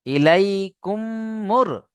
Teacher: ঈদগাম মানে হচ্ছে মেলানো, বুঝতে পারছেন? মিম সাকিনকে মিমের সাথে মিলিয়ে একালিফ গুণনা করে পড়তে হবে, একে ঈদগামে সাফাবি বলে।